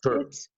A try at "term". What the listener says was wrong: term, not team, term.